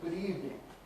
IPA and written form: ˈgʊd ˈiːvnɪŋ (good evening)